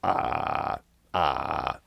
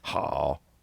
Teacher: just throw in some vocal fry and there's the fourth tone right there · they'll tell you it's a low tone but it's really just a vocal fry so it's like ha how ni just throw in some vocal